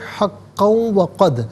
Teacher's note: ناظرین حقاً پڑھیں گے، وقف کی صورت میں حقا پڑھیں گے، اور ملا کر پڑھنے کی صورت میں حقا وقد، 2 زبر کی تنوین جو قاف کے اوپر ہے اسے واو کے ساتھ ملا کر وہ کی آواز کو غنّے کے ساتھ ادا کریں گے۔ یرملون کا جو قاعدہ وہ یہاں پر اپلائی کیا جائے گا، اور وقف کی صورت میں حقا پڑھا جائے گا کہ 2 زبر کی تنوین وقف میں الف سے چینج ہو جاتی ہے۔